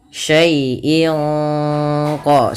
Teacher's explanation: Syai'in qadir ada bacaan ikhfa hakiki yang dimana suara tanwin pada lafal in disamarkan ke huruf qaf, yang mana qaf termasuk huruf ikhfa.